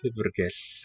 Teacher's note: Llyfrgell is the word for library with voiceless L beginning and end.